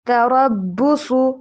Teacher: را اور صاد دونوں کو موٹا پڑھیے